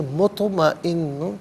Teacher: مطمئن میں طا ساکن ہے لیکن یہ حرف قلقلہ ہے، آواز لوٹتی بھی محسوس ہونی چاہیے، مطمئن۔ پھر اس کے بعد نون پر 2 پیش کی تنوین ہے، تنوین کے بعد با آ رہا ہے تو تنوین کو میم ساکن سے چینج کر کے میم کی آواز کو غننے کے ساتھ ادا کریں گے۔